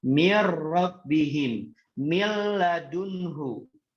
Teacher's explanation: Berbeda ketika nun ketemu dengan ro, dia dimasukkan tapi tidak boleh ditahan. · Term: idgham bila gunnah